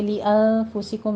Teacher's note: ली अनफुसिकुम नून साकिन का कायदा इख्फा हकीकी करेंगे